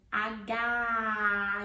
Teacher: it's an open vowel sound at the end. Aga, you open your mouth, ah, H, okay?